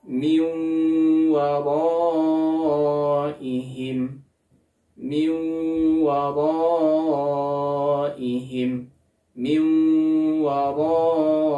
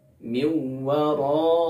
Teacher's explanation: Contoh yang keempat, nun sukun bertemu dengan waw, min waraihim, min waraihim, min waraihim. Dia dimasukkan nun sukunnya ke huruf wawnya serta digunnahkan dan ditahan selama 2 harokat. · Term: idgham bi gunnah